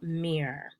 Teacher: in mirror you've also got two syllables but the stress is on the first syllable